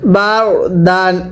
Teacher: র সাকিনের পূর্বে জবর হলে র সাকিন মোটা করে পড়তে হয়।